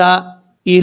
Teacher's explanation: کریں گے، عین واو زبر عاو، نون زبر نا، یدعون الی، لام کے اوپر کھڑا زبر پڑھا جا رہا ہے، لام کے بعد جو یا ہے اس یا کو پڑھنے کی ضرورت نہیں ہے ، یہ والا جو یا ہے اس وقت پڑھا جائے گا